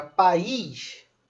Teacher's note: Então, se eu pegar a palavra país, que representa um território de uma determinada nação, por exemplo, Brasil é um país. Essa palavra país possui um hiato, que é o A em uma sílaba e o I em outra sílaba